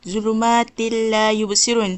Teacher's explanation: bila kita baca zulumatin la yubsirun, kita kena masukkan ta ni ke dalam huruf lam. Jadi zulumatilla yubsirun. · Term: idgham bila ghunnah